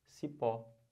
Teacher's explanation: Sílaba tônica é o pó. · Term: oxítona